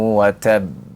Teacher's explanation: Jadi yang pertama ya wakafkan. Yang kedua tahan dengan tasdidnya. Yang ketiga baru kita ya munculkan qalqalahnya.